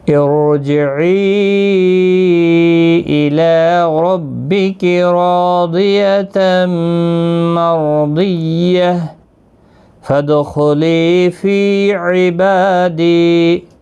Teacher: ساکن پڑھیں گے۔ ارجعی الی ربک راضیۃ مرضیہ فادخلی فی عبادی، دال ساکن پر قلقلہ ہوگا، خا مستعلیہ ہے، پر پڑھا جائے گا ، لی یا مدہ ہے، فی یا مدہ ہے، با کے